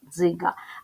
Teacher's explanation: дві букви д і з якщо вони стоять поряд позначають один звук ДЗ твердий приголосний